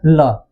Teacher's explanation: पार्श्व माने क्या होता है, बगल में, यानी ऐसी ध्वनि जिनका उच्चारण करते समय वायु दोनों तरफ से निकले उसे हम पार्श्विक ध्वनि कहते हैं।